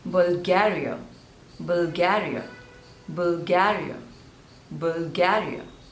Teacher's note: so there are three syllables and you have to stress on the second one